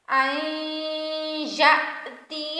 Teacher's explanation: من قبل ان یأتی، حمزہ ساکن ہے، یہاں جھٹکا دیں گے